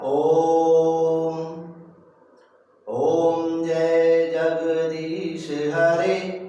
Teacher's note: ये दीर्घ से भी ज्यादा समय लग रहा है, यानी कि ह्रस्व से तिगुना समय लग रहा है